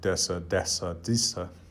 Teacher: But what's interesting is that when thorn is in a lightly stressed word, word that's naturally not going to receive a lot of stress in a sentence like these, Old Norse thessi, you can get slightly different outcomes. Of course, Icelandic still has thesi, but then in the continental languages, you get a D.